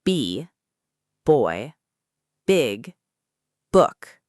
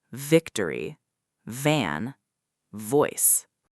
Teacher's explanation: B is pronounced with your lips completely closing together, like in the word boy. But V is pronounced with your top teeth gently touching your bottom lip, like in the word victory.